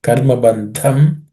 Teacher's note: The dha is aspirated.